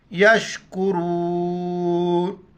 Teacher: रॉ पर ज़बर है, रॉ को मोटा पढ़ेंगे।